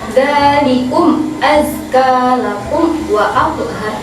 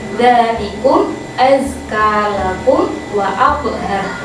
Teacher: Nah, idhar syafawi sudah dijelaskan tadi seperti mem sukun. Idhar itu harus dibaca jelas, jadi tidak dibaca dengung. Contoh, saya kasih contoh satu, yaitu dzalikum azkalakum wa athhar.